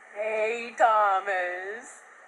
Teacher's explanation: the stressed syllable starts lower rather than higher